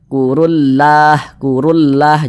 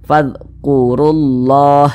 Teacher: ini dibaca tebal maka dibaca fadqurullah